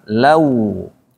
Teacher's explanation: Nah, biar tidak bunyi o, biar langsung ke u bunyinya, maka mulutnya dimonyongkan lau. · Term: monyong mulutnya